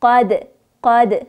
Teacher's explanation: قاف دل زبر قاد، قاف اپر میخوانیم، دال هم چون ساکن است قلقله میشه